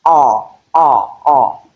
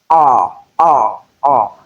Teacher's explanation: the back of the tongue is lowered to give you the sound. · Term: back vowel sound